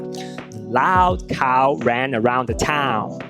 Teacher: com o início na vogal baixa central não arredondada e faz o glide, escorrega para vogal alta posterior arredondada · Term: ditongo crescente